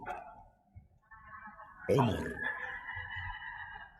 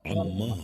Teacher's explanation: Kalau ain pertengahan antara tertahan dan dilepas. Nah, kemudian sama-sama jaharnya ya, jadi tidak ada udara yang keluar dari kedua huruf ini, tidak ada udara keluar ketika diucapkan.